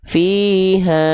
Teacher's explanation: Ha juga kan dua harakat. Berarti seperti melafalkan ha sebanyak dua kali pelafalan kadarnya ya.